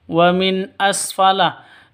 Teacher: Nun mati bertemu dengan hamzah. Jelas terang karena izhar halqi.